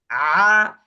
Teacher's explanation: হলকের মধ্যখান থেকে উচ্চারিত হবে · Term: আইন